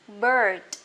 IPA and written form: bɜ:d (bird)